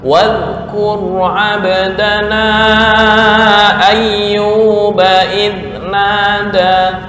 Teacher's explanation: Zal nggak boleh qalqalah.